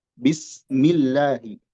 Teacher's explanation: Apa sebabnya dibaca dengan tipis? Likasri ma qoblaha. Karena ada harakat kasrah sebelumnya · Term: dibaca tipis